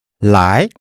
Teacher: To come, second tone.